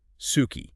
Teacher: It's basically when the vowels I and U become very quiet or almost silent when they're sandwiched between voiceless consonants. So it's like they disappear. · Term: devoicing